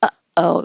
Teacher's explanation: my throat is squeezing it and stopping the airflow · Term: glottal stop